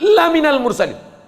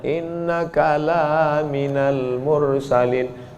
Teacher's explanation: Lam itu kalau dibaca pendek, sungguh engkau adalah seorang rasul. Tapi orang sekarang asal lam panjang.